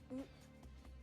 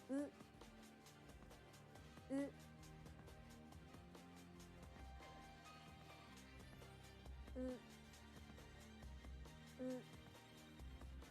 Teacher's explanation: The lips are more relaxed with the Japanese U sound than the English U.